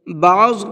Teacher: بعض کے اندر ضاد کو پر کر کے پڑھیں گے